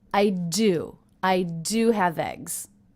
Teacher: I also notice how I stress the word do